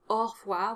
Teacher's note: It's pronounced au revoir, which means that AU is an opened O sound, which is very unusual. Normally AU is pronounced O.